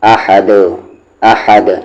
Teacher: دال پر اگر جزم آتا ہے تو پھر وہاں پر قلقلہ ہوتا ہے، یعنی آواز کو باؤنس کرتے ہیں۔